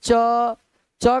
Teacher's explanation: तालु से बोलने के कारण इनको दोस्त हम लोग तालव्य शब्द बोलते हैं।